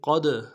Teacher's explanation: قد قاف کو موٹا کرنا ہے، دال کے ساتھ ملانا ہے، دال ساکن ہے، جب دال ساکن ہو تو قلقلہ کریں گے